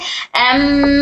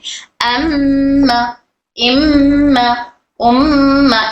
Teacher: म बोलते वक्त में आवाज हमारी नाक से बाहर निकल रही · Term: गुन्ना